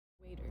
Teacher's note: And it's not water, water. It's not a real D. It's a quick D sound. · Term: flap sounds